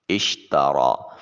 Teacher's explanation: شین کی ادائیگی کے وقت حروف شجریہ ہے، آواز منہ میں پھیل جانا چاہیے۔ را کے اوپر الف المدیہ الصغیرہ جسے ہم کھڑی زبر کہتے ہیں، ایک الف کے قائم مقام میں اس کو لمبا کیا جائے۔